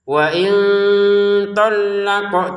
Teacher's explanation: wain bertemu th dibaca samar ya tholla lamnya ditekan qofnya dipantulkan.